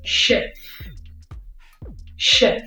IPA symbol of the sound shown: e